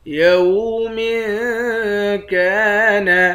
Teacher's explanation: یوم کان، میم کے نیچے 2 زیر ہے، یہاں اخفا کریں گے، کاف کے بعد الف ہے، اس الف کو 1 الف کے مقدار کھینچ کر پڑھیں گے، الف حرف مدہ ہے۔